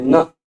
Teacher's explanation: दांत पे जीवा टच हो रही ना, का उच्चारण स्थान दंताह भी है, नासिका भी है।